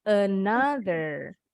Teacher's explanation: O-nya bunyinya salah. O-nya bunyinya jadi A.